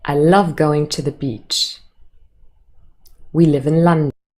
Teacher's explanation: all of those statements have a falling intonation at the end